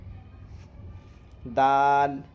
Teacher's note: سرا زبان اوپر کے سامنے والے دانتوں کی جڑ سے دال ادا ہوتا ہے۔